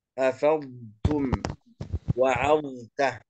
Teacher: وكذلك كلمة أفضتم لابد أن نأتي باستطالة حرف الضاد، لا نقول أفضتم أفضتم، نضغم الفاء في حرف التاء، لا، لابد أن نظهر حرف الضاد ونظهر الاستطالة في حرف الضاد